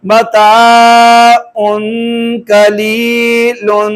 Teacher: قاف 15 میں سے ہے, یہاں پر اخفا ہو رہا ہے